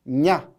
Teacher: 이 냐 발음은 혀와 입 천장이 붙어서 나오게 되는 소리예요. 냐 이렇게 됩니다. 냐가 되고 그리고 여기에 보면 얘의 동생이라고 보시면 돼요.